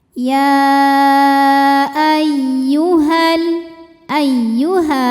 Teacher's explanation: Jadi walaupun penulisan mad thaobi'i dengan hamzahnya bersatu, tapi secara makna ini ada dua kata, maka disebut dengan mad jaiz munfasil hukmi. Ya ay ya tasydid ini cukup dibaca menggunakan nabr. Jadi kita tinggikan intonasinya jadi tidak perlu ditahan.